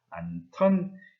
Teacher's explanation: 히읗과 디귿이 합쳐져서 티읕으로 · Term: 자음 축약 현상